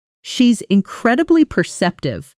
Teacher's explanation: Notice how she's incredibly almost runs together as one breath group.